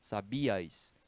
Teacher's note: né sabias a gente não vai ter um tritongo né porque a vogal fraca tá acentuada ela fica forte pronuncia-se em sílabas diferentes sabias são três sílabas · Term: hiato